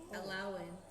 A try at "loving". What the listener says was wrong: Sorry, not allowing. Loving. Loving. I will say loving.